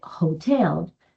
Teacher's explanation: En el caso de hotel, la H sí suena, como si fuera una J, por lo que se entiende que al ser consonante se utiliza A.